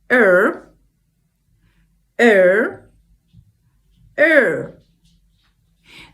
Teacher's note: the tip of the tongue is under our palate but it's not touching anything there